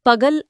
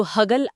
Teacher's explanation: ಇನ್ನೊಂದು ದೊಡ್ಡ ಬದಲಾವಣೆ ಅಂತ ಹೇಳ್ತಾರಲ್ಲ, ಪ ಕಾರ ಹ ಕಾರ ಆಗಿದ್ದು.